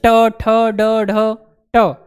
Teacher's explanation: तो जो जीभ होती है वो ऊपर वाले दांतों के जस्ट पीछे आती है, और जस्ट पीछे ऊपर होता क्या है, मूर्धा। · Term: मूर्धन्य ध्वनि